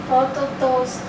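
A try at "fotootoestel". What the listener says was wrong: Tá vendo? Ela fala photo, to, ela fala o to, depois ela pega estel. Porque ela está fazendo o que? Ela está dividindo aqui. Mas não é para dividir, por quê? Porque isso aqui é uma ditonga. É uma só, basicamente dizendo aqui tem que soar como se fosse só uma letra. E não duas distintas.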